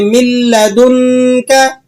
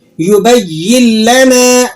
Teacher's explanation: ये इदगाम बिला गुन्ना होगा, यहाँ गुन्ना आप अदा नहीं करेंगे